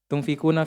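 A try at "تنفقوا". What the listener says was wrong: Enggak ada nanya. Tumfiku.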